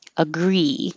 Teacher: Agree comes down, agree, and it gets stretched